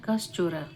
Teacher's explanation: विसर्ग के बाद अगर च या छ रहे तो विसर्ग के स्थान में तलेव्य श हो जाता है।